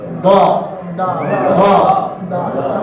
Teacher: Do itu sisi lidah boleh kanan boleh kiri nyentuh ke geraham. Do. Jadi sentuhkan ke geraham baru angkat tengah lidah ke langit-langit.